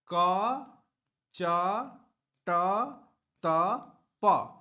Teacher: हमारी स्वर तंत्रिकाओं में कंपन नहीं होने वाला है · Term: अघोष वर्ण